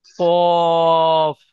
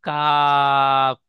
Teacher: প্রথম অক্ষরটি পড়লেন কফ, মুখ গোল করে পড়বেন, তিন আলিফ টান দিয়ে বলবেন। দ্বিতীয় অক্ষরটি সাধারণভাবে কাপ, মুখ গোল হবে না, সাধারণ অবস্থায় পড়বেন।